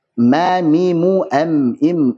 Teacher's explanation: Kemudian mim dua bibir nempel dan disertai dengan gunnah yang keluar dari al-khayshum.